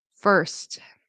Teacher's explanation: Um sometimes very often I hear Spanish speakers say for or first instead of first. You really want that T to pop and you really want to pronounce that consonant cluster